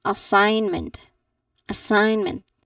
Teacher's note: there is a silent G sound. So the G in the middle is not pronounced.